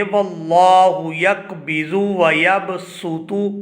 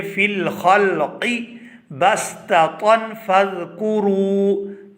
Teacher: یہاں پر ہم سین ادا کریں گے، صاد نہیں پڑھیں گے